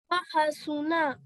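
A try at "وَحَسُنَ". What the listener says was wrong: Now, make sure that comes from your throat. So this ha here comes from your chest and this ha here comes from your throat.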